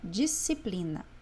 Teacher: quando eu leio disciplina, eu não escutei o som do C